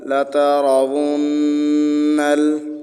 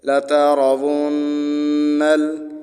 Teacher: نون پر گنہ ہوگا، ناک میں آواز چھپا کر پڑھنے کو گنہ کہتے ہیں۔ گنہ کی مقدار 3 الف کے برابر ہے۔